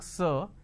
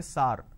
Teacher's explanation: instead of a vowel sound ER they end up using a vowel sound ah